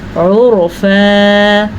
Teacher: یہ را پر یعنی کہ موٹی کر کے پڑھی جائے گی